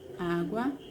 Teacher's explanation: Pois a sua penúltima sílaba é a mais forte, ou seja, a sílaba tônica. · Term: paroxítona